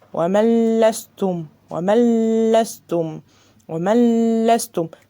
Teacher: اخفيت النون وما اديتهاش غنة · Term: ادغام بغير غنة